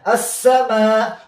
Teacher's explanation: دلته ادغام شته خو دلته یو بل غنه نشته یعنی پوزه کې نشته